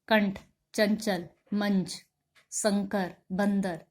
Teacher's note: जिन स्वरों का उच्चारण करते समय हवा नाक से निकलती है और उच्चारण को जोर से किया जाता है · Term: अनुस्वार